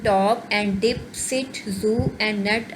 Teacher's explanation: The initial sounds in top and dip, sit, zoo and nut are all alveolars. इसमें अब हमें पता चल रहा है कि ट, ड, स, ज एंड न ये सब जो हैं ये alveolars हैं.